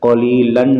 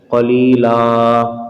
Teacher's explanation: آخر میں دو زبر کی تنوین کو الف سے بدلیں گے، قلیلن نہیں پڑھیں گے، قلیلا۔